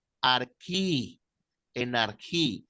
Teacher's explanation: La ji, normalmente al transliterarla, la transliteran como J, pero la pronunciación griega es más como una K suave